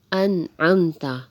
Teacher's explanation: اور اس کی پہچان بتا دی ہے کہ نون ساکن کے بعد جب بھی حروف ہلکی آ جائیں اور حروف ہلکی میں سے یہاں پر عین موجود ہے تو ہم نے یہاں پر نون کو ظاہر کر کے پڑھا، یعنی بغیر غنے کے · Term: اظہار